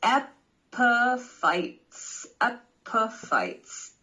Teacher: And the stress is in the first syllable.